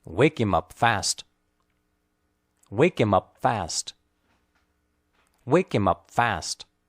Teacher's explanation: wake and fast are clearly stressed him and are spoken lightly and quickly remember that it's not